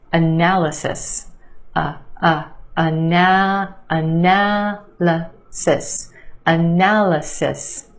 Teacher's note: emphasis on the second syllable the a sound analysis and yes there are two schwas in this word the first syllable and the third